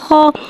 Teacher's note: खौ को एक अलिफ यानी दो हरकत के बराबर खींच के पढ़ेंगे। खौ हुर्फ मुस्तआलिया है, लिहाजा इसकी आवाज़ हलक से मोटी अदा होगी। खौ के ऊपर ज़बर है, ज़बर को मुँह खोल के अदा करके पढ़ेंगे।